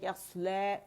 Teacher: اگر سٹاپ کر رہی ہوں تو مد اصلی بن رہا ہے یسلا، 2 کاؤنٹ کے لیے میں نے اس کی آواز کھینچی ہے